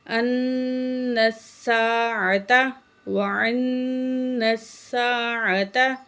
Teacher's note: نون میں غنہ کریں گے